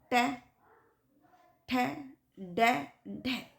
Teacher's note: उल्टी हुई नोक का निचला भाग मूर्धा से स्पर्श करता है। जो निचला भाग, नीचे का भाग मूर्धा से स्पर्श करता है, ऐसी स्थिति में उत्पन्न स्वर को हम मूर्धन्य व्यंजन कहते हैं।